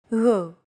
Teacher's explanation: It's like a very soft, continuous, and loosely held G, almost as if you're gargling, but don't make it sound too throaty. Γ. There's no such sound in English, but most people would transcribe this using the letter G because that's the closest equivalent in English.